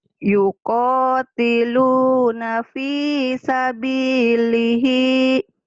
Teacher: B-nya panjang, Li-nya panjang, Hi-nya panjang.